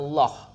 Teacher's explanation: Jadi ada huruf waw di sini. Huruf waw bertemu dengan lam jalalah. Ini dibaca dengan tafkhim untuk lam jalalah.